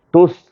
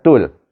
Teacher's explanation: Ini bukan tus, tul. Iaitu dengan izhar kamari.